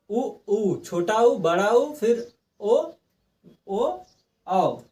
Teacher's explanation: ओठ हमारा क्या हो रहा है गोल हो जा रहा है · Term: वृत मुखी